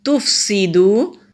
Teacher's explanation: فا جب ادا کریں گے ہلکی سی ہوا کے ساتھ ادا کریں گے۔ سین سیٹی والا حروف ہے، سیٹی کی آواز، اور واو سے پہلے پیش حروف مدہ، ایک الف کے برابر لمبا کریں گے۔